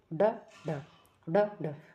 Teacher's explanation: एक झटके में जैसे ऐसा होता है ना फेंकना एक मुंह से जैसे अक्षर को एकदम से फेंक दिया। जैसे जिनका उच्चारण जीभ के नोक झटके से तालु को छूकर वापस आ जाती है। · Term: उत्क्षिप्त वर्ण